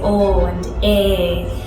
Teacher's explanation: sounds a bit like a combination of Irish and Cockney and they have these really long pure vowel sound so they say o and a in the Yola accent and